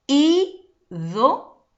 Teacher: ¿Cómo baja la intensidad? Entonces, la mayor intensidad lo encontramos, ¿de acuerdo?, en la antepenúltima sílaba. Esa es tu sílaba tónica.